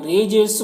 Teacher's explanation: رجسن یہاں پر را کے نیچے زیر ہے تو باریک پڑھیں گے